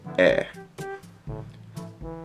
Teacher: So the vowel that makes the ah sound, and that's all that really is with those two vowels together. It's just there's a slight pause right before you say ah.